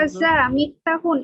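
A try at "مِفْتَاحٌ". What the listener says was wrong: না, মিফতাহুন, হ্যাঁ মিফতাহুন, এরকম তাতে তাটা লম্বা করে বলতে বলতে হবে,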